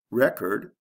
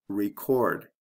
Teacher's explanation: with the first one there's a short e and the second one there's a long e